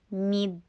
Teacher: میم کے نیچے کسرہ، ای کی ساؤنڈ کرنی ضروری ہے